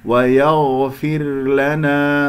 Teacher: ويغفر لنا، الغين مفخمة مرتبة رابعة لأنها ساكنة، والراء يجري فيها الصوت فترة زمنية بسيطة، وهي مكسورة قبلها مكسورة هي ساكنة تكون مرققة